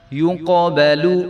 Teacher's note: تو قاف کے اوپر جو ہے وہ قلقلہ ہوگا